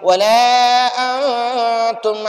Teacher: تو اب ہم نون ساکن کو ناک میں چھپائیں گے. ولا انتم عابدون ما اعبد، ما پر مت کریں گے، اس ماں کو تھوڑا لمبا پڑھیں گے.